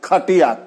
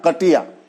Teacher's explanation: जो महाघोष महाप्राण है जिसमें कि दोगुनी ताकत लगती है, उसको हम कम करके बोल देते हैं